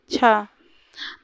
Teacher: तो छ स्पर्शी संघर्षी महाप्राण व्यंजन है।